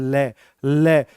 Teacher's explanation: तो आपकी जो जीभ का पिछला हिस्सा है ना वो दांतों से टकराता है। ल जैसे ऐ से टकराता है ऊपर जाके। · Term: पासर्विक व्यंजन